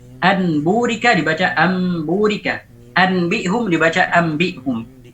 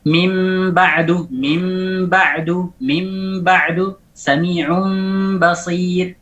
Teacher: Mengganti nun sakinah atau tanwin indal ba'i, ketika bertemu dengan ba, miman mukhfatan bi ghunnah. Mengganti nun atau tanwin ketika bertemu ba dengan mim yang diidghamkan dengan ghunnah. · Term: iqlab